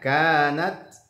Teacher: Kanat, ada tak sukun, ada mahmusnya terdengar.